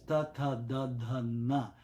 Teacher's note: You're touching the back of the teeth with your tongue, which is not in English at all.